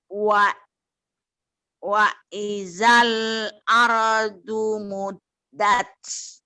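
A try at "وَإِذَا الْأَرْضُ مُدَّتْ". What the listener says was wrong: Nah, udah bener tapi dalnya kurang tasjid. Muddat.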